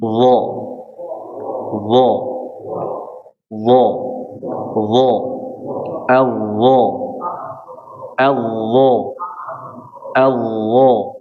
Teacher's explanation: Wajib ditempelkan antara ujung lidah dengan ujung gigi seri atas di sini makhrajnya. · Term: huruf dha